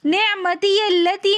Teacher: نعمتی التی میں یا کو ہم لام کے ساتھ ملا کر پڑھیں گے نعمتی التی، یہاں پر بھی مد منفصل ہو رہی ہے، کم سے کم 3 الف کی مقدار، ویسے 4 سے 5 الف کی مقدار اس کو کھینچ کر پڑھیں گے